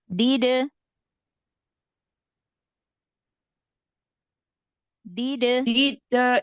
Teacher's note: ini ada qolqola sugro dalnya dibaca ringan